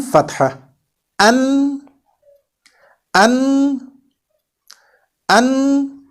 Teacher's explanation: When we articulate noon some or I would say half of the voice or air comes out from our nose.